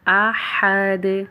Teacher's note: ہے، کفواً احد، ہا کی ادائیگی وسط حلق سے ہوگی، احد، دال کے اوپر قلقلہ ہوگا